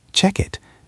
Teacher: a native speaker connects the K sound in check to the I sound in it. It becomes check it. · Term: linking